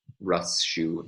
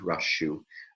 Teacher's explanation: there's not a complete assimilation of sa to sh. There's a bit of a transition still there, almost like the sa begins a bit early to transform into the sh, anticipating the following sh.